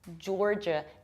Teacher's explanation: Pay attention to how strongly I pronounce R, jor, and how much I reduce the ending, j.